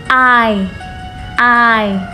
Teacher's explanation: I là một nguyên âm. Và nó bắt đầu bằng chữ A, kéo dài chữ A ra, A, và chuyển sang chữ y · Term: nguyên âm đôi I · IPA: /ai/